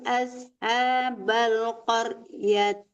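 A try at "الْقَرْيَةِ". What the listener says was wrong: Qaryah, bukan qaryat ya. Itu tamar bukan fatihah.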